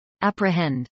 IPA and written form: ˌæprɪhˈɛnd (apprehend)